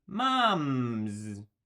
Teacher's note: nasal sound so we keep the S at the end but we say it as a z to keep our voice on because it's already on for the M sound